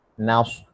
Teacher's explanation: Sofir ni macam bunyi unggas, bunyi siulan